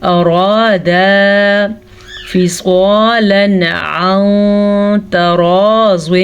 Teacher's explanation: سواد کو پر پڑھیں گے کیونکہ سواد ہمیشہ ہی پر پڑھی جاتی ہے